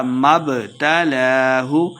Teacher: لام کے اوپر کھڑی زبر دو حرکات لمبا کر کے پڑھیں گے